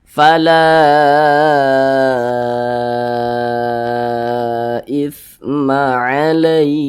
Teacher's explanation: Panjangnya itu 4 hingga 5 harokat. Nah, kira-kiranya 4 ketukan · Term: mad jaiz munfasil